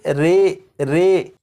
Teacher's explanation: یہاں پر لکھا ہے امالہ، زبر کو زیر کی طرف اور الف کو یا کی طرف مائل کر کے پڑھنے کو امالہ کہتے ہیں۔ امالہ کی راء کو اردو کے لفظ قطرے کی راء کی طرح پڑھیں گے، یعنی ری نہیں بلکہ رے پڑھیں گے۔